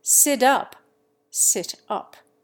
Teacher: American tends to abandon T for D